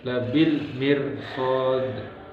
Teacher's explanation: huruf ra yang sukun yang diawali harakat kasroh, maka hukumnya di sini dibaca tarkib, yaitu tipis